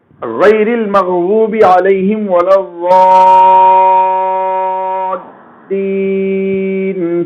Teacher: ضال میں جو کھینچ رہے ہیں وہ مد لازم ہے، جس کو 3 الف یعنی 6 حرکتوں کے برابر آپ کھینچ کر پڑھیں گے